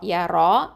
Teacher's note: ரா வந்து ஹெவியாக உச்சரிக்கணும், தஃப்ஹீம்